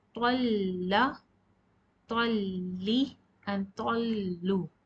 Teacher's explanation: So you need to press the tip of the tongue behind your upper incisors and say with shadda, with talla, talli and tallu. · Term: lam with shadda